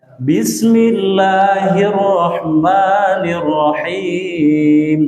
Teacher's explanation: Kalau kita mau membaca melantunkan irama, itu di Bismillahnya diturunkan.